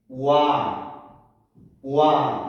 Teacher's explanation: 오와 비슷한 소리가 스쳐 지나가고 뒤에 아가 있는 거예요. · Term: 이중모음